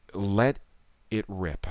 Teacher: in that sentence let it rip the words let and rip are going to be receiving emphasis